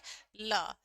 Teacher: जीभ जो है हमारे मुंह के अंदर एक पार्श्व बना ले, जीभ जो है वो हमारी पार्श्व बना ले और वायु मुंह के दोनों ओर से बराबर मात्रा में निकले, ओके, दोनों ओर से बराबर मात्रा के अंदर बाहर निकल जाए तो उसको बोलते हैं हम पार्श्विक व्यंजन।